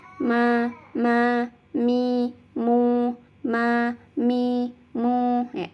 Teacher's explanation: ketika mengucapkan huruf mim ini ada ghunnah ada demung yang keluar dari rongga hidung